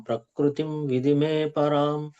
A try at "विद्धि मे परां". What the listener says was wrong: ఒక్కటి కొంచెం మిస్టేక్. మీరు విధిమే పరాం అన్నారు, అది విధిమే అని చదవద్దు. అది కింద దావత్తు ఉంది కదా ప్రభు, దాన్ని ఒత్తి పలకాలి. విద్ధిమే పరాం. ప్రకృతిం విద్ధిమే పరాం.